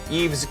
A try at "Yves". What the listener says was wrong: Yves. It's just Yves, no S.